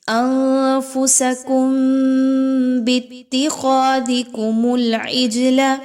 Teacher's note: خواہ کو موٹا کر کے پڑھیے، خواہ موٹا حرف ہے، اس کی وجہ سے الف بھی موٹا کر کے پڑھا جائے گا